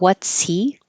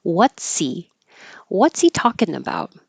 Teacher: Get rid of the H, and it sounds like what's he?